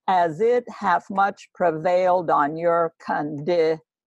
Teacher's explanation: shakespeare has put the word condition or he's given it that extra unstressed syllable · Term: feminine endings